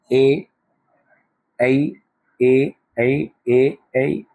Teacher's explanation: ए बोलने में ए तालु भी कार्य करेगी और हमारा कंठ भी काम करेगा। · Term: कंठ तालु